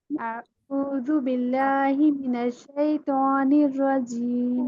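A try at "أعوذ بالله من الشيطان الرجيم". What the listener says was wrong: बेहतर है माई।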